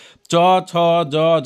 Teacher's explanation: सभी का उच्चारण स्थान जो है तालू ही होगा